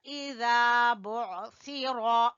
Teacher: सा जबान की नोक और ऊपर वाले दो दांतों के सिरे आपस में टकराएंगे तो सा अदा होगा